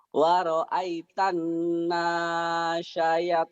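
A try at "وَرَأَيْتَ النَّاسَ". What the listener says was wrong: Sinnya kecil, nasa, bukan nasya, nasa, sanya kecil.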